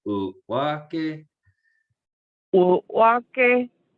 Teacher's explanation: It's a glottalized W, so there's a glottal stop.